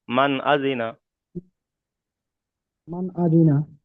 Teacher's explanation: মান মিম আজিনা, আন মান আজিনা, এখানে আজিনা এরকম পড়বেন না। এখানে তিনটা সব হারাকাত হয়ে যায়, কোনো জায়গায় টান হবে না।